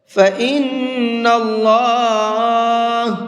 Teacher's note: نون پر تشدید ہے تو نون کے اندر غنہ کر کے پڑھیں گے، اور اللہ کے لام کو منہ بھر کے پڑھیں گے، اس لیے کہ اللہ کے لام سے پہلے یہاں پر بھی زبر ہے۔